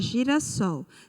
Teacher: A sílaba tônica na palavra girassol foi a sílaba sol. Observe que a sílaba sol, ela é a última sílaba da palavra.